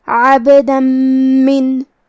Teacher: تو ہم یہ تنوین کو میم میں ملا کے غنہ اور تشدید کے ساتھ یہ حکم کو ادا کریں گے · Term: ادغام